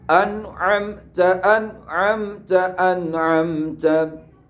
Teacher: apabila ada nun sukun atau tanwin bertemu dengan ain, maka juga nunnya, tanwinnya harus dibaca jelas. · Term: idhar halqi